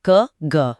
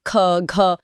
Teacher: अल्प प्राण यानी कम हवा और महाप्राण यानी अधिक हवा